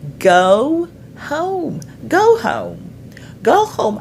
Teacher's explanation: le son de voyelle O, c'est pas un O fixe. Souvent, on va dire home.